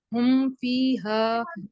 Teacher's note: इसमें हा हरूफे हल्की है, इसको हल्क से अदा करेंगे